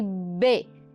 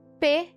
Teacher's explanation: Então, se nós formos pensar em pares, nós temos P e B, não vozeada e vozeada. São oclusivas, são bilabiais, mas uma é vozeada, B, e outra não é, P.